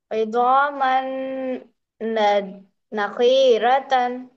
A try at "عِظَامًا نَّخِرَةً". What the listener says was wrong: خواہ کو کھینچنا ہے. خواہ کو کھینچنا ہے. تو بغیر کھینچے کے بولیے. نخرة.